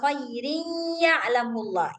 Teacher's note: nggak boleh kedengaran suara tanwinnya, nggak boleh baca min khairin ya'lam tuh nggak boleh. Harus langsung masuk ke ya. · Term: Idgham